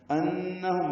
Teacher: انہم میں نون مشدد پہ غنہ ہے